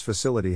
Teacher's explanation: the accent is in the second syllable corresponding to Sill